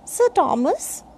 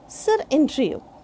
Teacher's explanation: If someone's name starts with consonant sound, then R is silent. And if someone's name starts with vowel sound, then R will be pronounced.